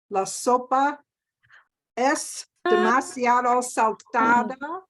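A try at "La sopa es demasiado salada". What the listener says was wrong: Salada. Salada. Y no es saltada. There's no T sound in it. Salada or salado.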